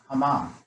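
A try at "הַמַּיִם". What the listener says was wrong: No. It's 3 syllables.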